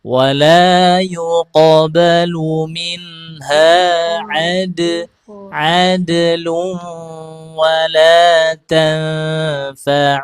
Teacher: Huruf qaf sama huruf to arah pantulannya ke fathah.